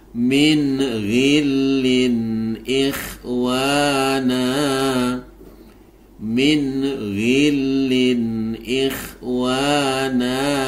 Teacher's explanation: Nah, perhatikan ini bacaan idhar halqi. Jelaskan minnya. Karena nun sukun bertemu dengan ghain